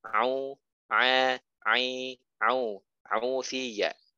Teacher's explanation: Hati-hati ketika ainnya doma, sempurnakan monyongnya, sempurnakan u-nya.